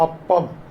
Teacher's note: അപ്പം എന്ന് പറയണമെന്നുണ്ടെങ്കിൽ താഴത്തെ ചുണ്ട് മുകളിലത്തെ ചുണ്ട് ചെന്ന് തൊടുക തന്നെ വേണം. മുകളിലത്തെ ചുണ്ട് താഴത്തെ ചുണ്ടിൽ വന്ന് തൊടുക അല്ല ഭാഗ്യവശാൽ സംഭവിക്കുന്നത്.